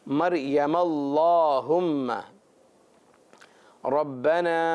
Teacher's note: اللہم کا جو الف ہے یہ پڑھنے میں نہیں آتا، یوں کہیے کہ گر جاتا ہے.